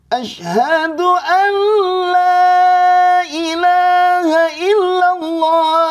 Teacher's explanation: harus ditajdid karena di sini ada hukum namanya idgham bilagunah Jadi kalau nun sukun bertemu lam itu nunnya hilang dan masuk ke lam ya dan eh di sini ditasdidkan secara otomatis Ashadu Alla jangan